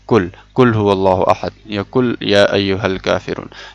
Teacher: تو یہ قوف کی جگہ کاف پڑھنا یہ حرام ہے اور یہ لحن جلی میں آتا ہے